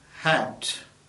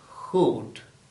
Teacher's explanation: the lips are flat when you produce the sound in hat